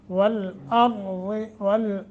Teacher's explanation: वाव रा ज़ाद ये पुर करने हैं।